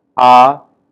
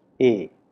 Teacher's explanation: A sound like ah is found to have greater amplitude than a sound like a, for example.